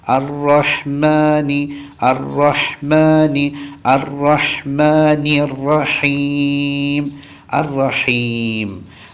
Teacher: ശരി അടുത്തത് അറഹ്മാനി റഹീം അറഹ്മാനി റഹീം അത് നമ്മൾ ശ്രദ്ധിക്കണം റാഹ് ശ്രദ്ധിക്കണം റാഹ് ചുണ്ട് ഇങ്ങനെ കൂടി വരാൻ പാടില്ല അതോടൊപ്പം തന്നെ തഫ്ഹീം ആക്കുകയും വേണം വായ നിറച്ചു പറയുകയും വേണം